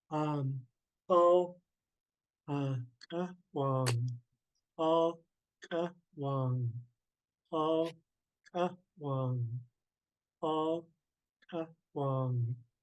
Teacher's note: You got to use a glottal stop and a W.